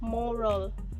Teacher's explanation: Here the A is reduced into a schwa sound and we will pronounce it as moral.